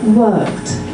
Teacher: There's a little bit of the R coming through.